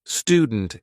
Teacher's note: in American English in words like student YouTube Duty new you would just say the sound oo instead of saying you